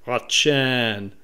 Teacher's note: that's more of a cloudy emphatic t as opposed to a regular t